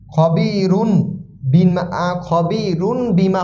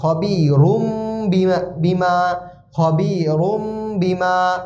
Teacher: নুনে সাকিন বা তানভিনের পরে যদি বা আসে, নুনে সাকিন ও তানভিনের পরে যদি বা আসে, তাহলে উক্ত নুন সাকিন বা তানভিনকে ছোট মিম দ্বারা পরিবর্তন করে পড়তে হবে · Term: ইকলাব